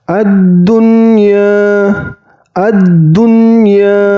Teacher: ingat Nun sukunnya tidak boleh ditahan atau didengungkan · Nun sukunnya tidak boleh dengung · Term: izhar wajib, Izar wajib